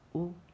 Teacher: پیش کی آواز آگے کو جاتی ہے اور ہونٹ گول ہوتے ہیں